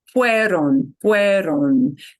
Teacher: that on at the end, a lot of us tend to want to make a schwa, and you really want to make sure you don't